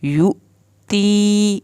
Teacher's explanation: نرمی سے ادا کرنا ہے، یا ساکن کو کھینچ کے، یؤتی یو پہ جھٹکا لگائیں گے، حمزہ کے اوپر جزم آ گئی ہے ، تی یا ساکن کو کھینچیں گے، یؤتی مالہ، ماں کے